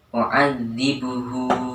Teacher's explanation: Di situ terdapat hak dhamir bertemu dengan ain yang berharokat fathah, maka hak dhamir tersebut dibaca mat. Mat panjangnya 2 harokat atau 1 alif. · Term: mad silah qasirah